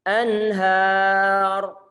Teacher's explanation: Kalau makhraj berjauhan, maka bacalah ataupun berilah hukum izhar. Nun dibaca dengan jelas. Jangan disertai dengan penahanan suara gunnah.